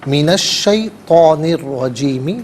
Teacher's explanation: لام کا ساؤنڈ نہیں، بلکہ شین اور را کا ساؤنڈ ہوگا. را پر زبر ہے، را کو پر کر کے پڑھیں گے. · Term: حرف شمسیہ